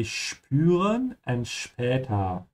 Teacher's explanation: whenever you have S that comes before a P, it's pronounced like sh.